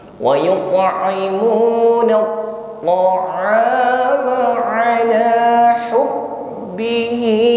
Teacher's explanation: huruf ba yang sifatnya syiddah, ada aliran suara yang tertahan ketika menekan pada huruf ba